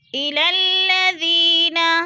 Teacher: ساکن سے پہلے ذال کے نیچے زیر ہے تو یا مدہ، یا مدہ کو ہم نے 1 الف 2 حرکات کے برابر لمبا کر کے پڑھنا ہے